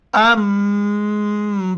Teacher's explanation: नून साकिन के बाद जब भी बा आ जाए तो नून साकिन मीम में कन्वर्ट हो जाता है, फिर नून नहीं पढ़ा जाता है बल्कि मीम पढ़ा जाता है। और यहाँ पर नाक में आवाज़ भी पैदा करेंगे।